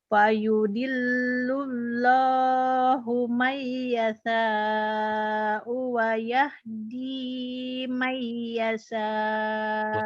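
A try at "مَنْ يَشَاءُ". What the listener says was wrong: Utang shin. Shinnya gede itu. Fayudillullahu mayyasha'u wa yahdi mayyasha'. Coba shinnya gedein. Shin. Sya. Sya Sya-nya ada anginnya. Sya. Sya.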